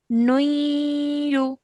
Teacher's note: whenever you have tanween followed by ya mushaddad, we join the two letters with a nasal sound, holding it for 2 seconds. Okay, so whenever we join these two together, I'm going to say nuyu, like that, and then join the line afterwards.